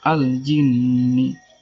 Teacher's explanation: Karena ada huruf nun yang bertasydid, cara membacanya masuk dengan mendengung. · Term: gunnah musaddah